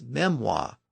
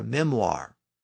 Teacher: American English tends to pronounce the r sound at the end but British English doesn't